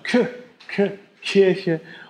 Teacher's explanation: da ist irgendwie noch so eine Behauchung im Deutschen